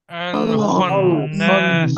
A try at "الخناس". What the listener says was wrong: খটা সোজা, শুধু আমরা যে খটা বলতাম খ, তার থেকে একটু খটাকে ভিতরের দিকে নিতে হবে। আল খন্নাস। হ্যাঁ, আইন এবং খ একই জায়গা থেকে উচ্চারণ হবে, কণ্ঠনালীর একদম উপরে, এই যে কণ্ঠনালীর একদম উপরে।